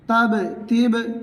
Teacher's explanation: বা উচ্চারণ হবে দুই ঠোঁটের ভিজা অংশ থেকে